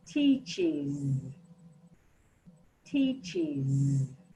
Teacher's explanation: this is a voiced sound, and you should feel the vibration on your tongue because you're pronouncing that z again, but with the I. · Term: is sound